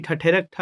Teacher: तो ये महाप्राण है, क्योंकि ठ जैसे हम बोलते हैं तो हवा बहुत ज़ोर से निकलता है